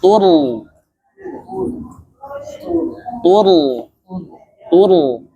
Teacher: ro sukun sebelumnya fathah tebal